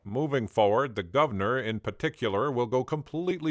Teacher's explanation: some Americans might also dissimilate the first R in words like Governor berserk and particular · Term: dissimilation